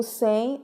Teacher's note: O sem, ortograficamente, não tem encontros vocálicos, mas foneticamente, esse M não tem som de M e sim som de I.